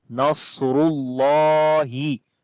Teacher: لام کو لمبا کریں گے، کھڑی زبر ہے ، ہا کی آواز آئے گی، نصر اللہ والفتح، واو کو